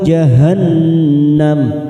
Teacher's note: nun yang bertasdid bacaan gunnah, kita tekan 3 atau 2 harokat